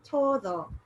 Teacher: when a d comes between two vowels we tend to pronounce it's like a hard th